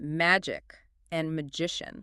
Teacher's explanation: magic ends with a hard K sound, but magician has a soft she sound. But look at the spelling, M-A-G-I-C in both.